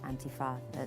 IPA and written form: ˈantɪfɑː (Antifa)